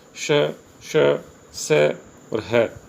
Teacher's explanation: इन व्यंजनों के उच्चारण के समय वायु मुख से रगड़ खाकर ऊष्मा पैदा करती है, यानी उच्चारण के समय मुख से गर्म हवा निकलती है। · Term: उष्म व्यंजन